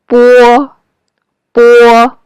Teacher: It looks like B in English IPA. In English, it's a voiced consonant, but in Chinese, it's a voiceless consonant.